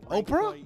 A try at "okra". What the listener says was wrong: Kind of, but instead of the P, it's a C. okra.